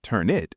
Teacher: turn it is a classic consonant to vowel link